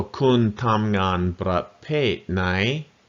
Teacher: kun is flat tone, which is a middle tone. So middle tone, low tone, falling tone, rising tone.